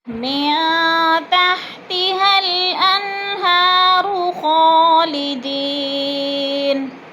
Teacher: من تحتها الانہار خالدین، من میں اخفا ہے، نون ساکن کے بعد تا آگے ہے تو اخفا کریں گے، ناک میں آواز کو چھپا کر پڑھیں گے